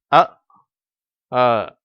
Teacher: ஆங்கில அந்த அ என்பது கொஞ்சம் அழுத்தமாகவும் வேகமாகவும் இருக்கும் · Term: அ என்ற உச்சரிப்பு